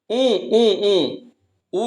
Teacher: जैसे बोलिएगा ऊ, तो होठ दोनों उठेगा, तो उठेगा यानी ओष्ठ हो गया। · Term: दीर्घ उ